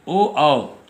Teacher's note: गला और ओठ इन दोनों के मिश्रित रूप से आवाज़ निकलती है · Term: कंठ और ओठ